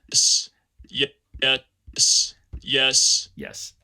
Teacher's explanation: i say it a little bit funnily because i don't want to go into creaky voice uh yeah you can see how flat my f-zero contour is